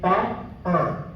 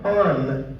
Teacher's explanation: It's a nasalized vowel. The acoustics are very different.